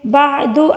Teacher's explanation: فَمَا يُكَذِّبُكَ، کاف کو باریک پڑھیں گے، زال کو بالکل نرمی سے پڑھیں گے، بعد، عین کو حلق کے درمیانی حصے سے ادا کریں گے